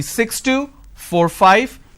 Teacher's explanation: the last unit of your string should be louder but a drop tone